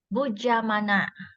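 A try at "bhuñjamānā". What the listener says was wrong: You have not pronounced this part. Bunjamana. Bunj. There's an N sound. Bunjamana. Not bujamana.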